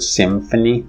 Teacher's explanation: This in English is a phonetic variation of ma and occurs in the word symphony. So it's a labiodental ma.